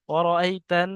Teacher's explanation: নুনের উপর তাসদিদ গুণনা হবে